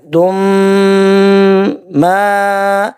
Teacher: دال کے اوپر 2 پیش تنوین، تنوین کے بعد آگے میم ہے، تو یہاں پہ ادغام کا قاعدہ اپلائی ہو رہا ہے، نون ساکن کا ہم نے غنہ کرنا ہے